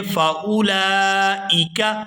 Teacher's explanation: یہاں حمزہ کے نیچے زیر ہے تو اس کو بغیر کھینچے ہوئے یہاں پر ادا کریں گے